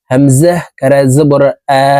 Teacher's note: জবরের উচ্চারণ উপরের দিকে ধাবিত করে এক আলিফটা নিয়ে পড়িতে হয়